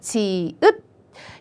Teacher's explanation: 혓바닥이 입천장에 닿는 센 입천장 소리